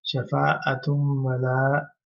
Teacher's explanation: we have to pronounce oo sound, but then noon sound will be merged into wow. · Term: idgham